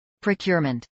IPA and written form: pɹoʊˈkjʊəɹmənt (procurement)